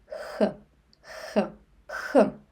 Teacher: When you pronounce kh you actually your tongue doesn't touch the palate. kh kh kh Just a fissure of a stream of air goes through like kh kh Let's try to practice. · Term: Russian letter kh